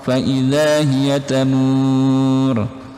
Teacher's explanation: Mur panjang boleh 2, 4 atau 6 harokat dan ditebalkan di bagian ro-nya.